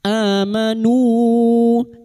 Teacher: nu bertemunya mad dengan hamzah di lain kalimat mad jaiz munfasil 5 harokat kita panjangkan · a bertemunya hamzah dengan mad badal 2 harokat kita panjangkan